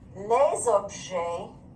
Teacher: this again we have to make in french what's called liaison liaison makes the words blend together so this s turns into a z sound that s doesn't have an s sound it has a z · words blend together so this s turns into a z sound that s doesn't have an s sound it has a z sound